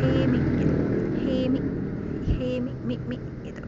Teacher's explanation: Nah, itu kan berhenti di him, mi-nya dibaca 1/3 harokat. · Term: raum